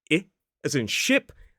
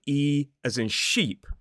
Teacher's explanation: The first word, ship, which goes on water, has that short I vowel sound, whereas the word sheep, which is the animal that goes meh, has the longer E sound.